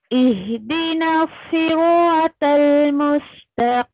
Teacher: नीम हो गया साकिन, तो आपके लिप्स बंद